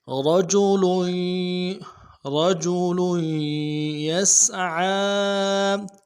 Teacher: تنوین کو آگے یا کے ساتھ ملائیں گے کیونکہ یا کے اوپر تشدید ہے، اور تشدید نہیں پڑھیں گے بلکہ یا کے ساتھ زور دے کے پڑھیں گے۔